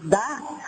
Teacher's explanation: O dá, além de bater a ponta da língua, eu preciso fazer uma vibração interior de prega vocal.